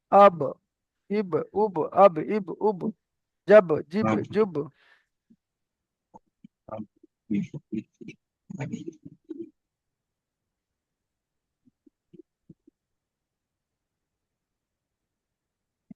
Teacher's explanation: দুই ঠোঁটের ভিজে অংশ মিলিত হয়ে উচ্চারিত হয়